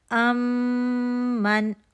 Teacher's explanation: जब मीम के बाद मीम आएगा तो मीम साकिन मीम जो मुशद हरकत वाला है उसमें मर्ज हो जाएगा मर्ज होने की वजह से यह मुशद्द हो गया ठीक है मर्ज मर्ज हुआ तो फिर यह मुशद्द हुआ। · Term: इदगाम शफी